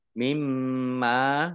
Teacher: mim tasdid dibaca gunnah atau mendengung ditahan 2 harokat.